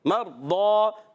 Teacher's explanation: ایک الف کا غنہ کریں گے، مرضا، را ساکن سے پہلے زبر، را کو موٹا کریں گے